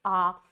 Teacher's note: आ जब आप बोलेंगे आ, तो आपका मुंह पूरी तरह से खुला है, तो आपका विव्रत हो गया आ।